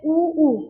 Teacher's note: उ को अपन बोलते तो हमारे होटों की जो आकृति है व कैसी हो जाती है गोल हो जाती है तो इनका उच्चारण हम मस्ट के बिना कर ही नहीं सकते